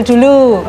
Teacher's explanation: Pada klip video terjadi peristiwa intervensi fonologi bahasa Jawa dalam bahasa Indonesia, di mana sebagai narasumber yang diwawancarai mengucapkan fonem pada kata dulu dengan menambahkan bunyi nasal di depan konsonan D sehingga terdengar seperti dulu pada kata tersebut.